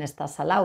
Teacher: También tienen esa omisión de la D que que la vemos en Andalucía.